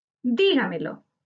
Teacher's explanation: Dígamelo es una palabra sobreesdrújula. Su sílaba tónica está en di, anterior a la antepenúltima sílaba.